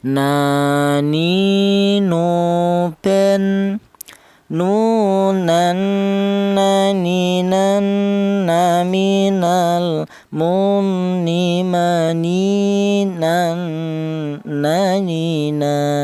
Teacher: Huruf nun ini keluarnya huruf berasal dari ujung lidah menyentuh langit-langit mulut.